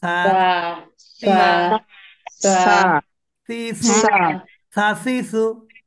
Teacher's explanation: জিহ্বার আগাটা উপরের দাঁতের আগার সাথে টাচ করবে উপরের দাঁতের আগাকে টাচ করবে এবং জিহ্বার আগার মাথাটা একটু বের হবে একটু বের হবে তাহলে উচ্চারণটা সঠিক হবে মানে আপনি যখন ছা